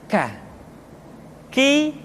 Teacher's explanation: diucapkan dengan mengangkat pangkal lidah kita ke posisi di depan huruf qaf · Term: huruf k